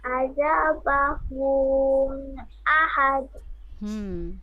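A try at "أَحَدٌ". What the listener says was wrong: বাহুন না, আযাবাহু আহাদ, ঠিক আছে।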